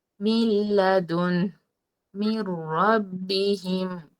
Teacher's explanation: মিলিয়ে পড়বো ঠিকই কিন্তু গুন্নাহ করবো না অর্থাৎ নাকের ভিতর বলবো না স্পষ্ট করে বলবো